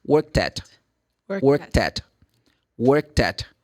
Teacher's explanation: Você pega o último som que é produzido t, e junta com a proposição at.